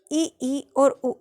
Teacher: सबसे पहला है संवृत स्वर, जिन स्वरों के उच्चारण में मुख सबसे कम खुलता है। आप ई और उ का उच्चारण करेंगे तो आपको पता चलेगा कि सबसे कम ई और उ में खुलता है।